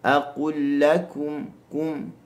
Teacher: bila kita sebut huruf kaf, huruf ta, dia ada unsur untuk meludah sedikit.